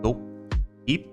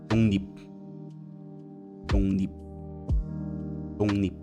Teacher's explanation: If you have G followed by L, G changes to NG and L changes to N.